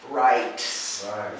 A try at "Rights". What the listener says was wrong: Put the T and the S together. Rights.